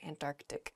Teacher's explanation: when you're saying this word quickly you might leave out that first C